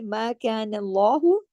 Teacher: اگلی آیت دیکھیے، ما کان اللہ، اللہ کے نام کو ہیوی کریں گے نون کے زبر کی وجہ سے